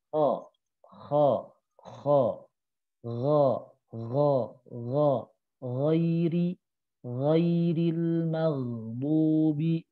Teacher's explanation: kha dan ghain makhrajnya itu di tenggorokan atas di sini. Tenggorokan atas dekat dengan pangkal lidah. Maka kha dan ghain ini itu dikategorikan huruf tebal juga.